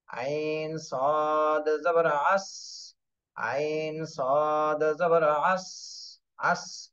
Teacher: সদ এটা কিন্তু কলকলার হরফ না, এই জন্য ধাক্কা লাগবে না